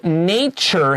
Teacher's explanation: the word nature has a special pronunciation t is ch